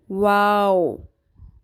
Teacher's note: واو 2 ہونٹوں کو گول کر کے ادا ہوتا ہے۔ واو کی ادائیگی کے دوران ہونٹوں کو ناتمام گول کیا جاتا ہے۔